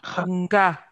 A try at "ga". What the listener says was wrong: Il n'y a pas N devant, tu dis nga. Non. C'est ga et non nga.